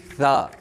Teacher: ज़बान की नोक ऊपर वाले दांतों के सिरे से लगकर सा अदा होती है